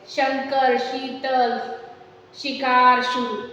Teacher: जीभ थोड़ी सी ऊपर आती है, यानी तालव्य को स्पर्श करती है। शंकर, शीतल, शिकार, शुरू, और उसके बाद यानी जीभ पहले यहाँ दांत पर आई, फिर ये श के लिए तालु पे आई, फिर और पीछे गई मूर्धन पे, यानी ऊपर वाले हिस्से के।